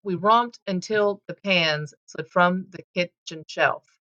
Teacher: It's stress. It's unstressed stress, unstressed stress, unstressed stress. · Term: meter